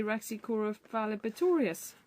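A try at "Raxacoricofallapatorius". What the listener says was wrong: You missed the co.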